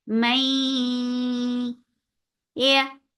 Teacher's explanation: You're lifting your tongue up towards the palate, but it is not touching, and the muscles of your tongue are very soft. That is making ya very soft letter.